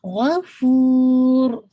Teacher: را کو بھی جب آپ روکیں گے غفور، ٹھیک ہے، را کو ہیوی رکھیے گا